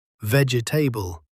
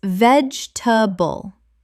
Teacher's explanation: It's like the e in the middle is just a ghost. You see it, but you don't hear it. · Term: three quick syllables